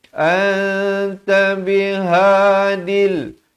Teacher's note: ha simple, makhrajnya dipangkal kerongkong